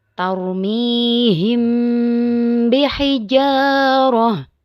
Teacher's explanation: suara yang samar antara mim dan ba pada bibir kemudian ditahan kira-kira dua harakat Seraya mengeluarkan suara Ifa dari pangkal hidung perhatikan contoh berikut tarmiihim